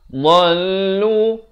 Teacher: dha makhrajnya di tepi lidah kanan atau kiri mengikut keselesaan.